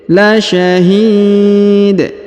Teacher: huruf hi dipanjangkan, boleh 2, boleh 4, boleh 6 ya. Karena di depan huruf hi terdapat ya sukun atau ya mati sebelum huruf pemberhentian, dan huruf pemberhentian huruf dal atau dun disukunkan atau dimatikan ya.